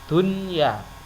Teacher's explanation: tidak boleh dibaca idgham bihunnah, tidak boleh dibaca duya, tidak boleh, tapi harus dibaca dunya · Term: idhar wajib